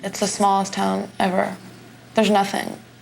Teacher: Her breathy, baby voice tone seemed to fit the persona of a ditzy socialite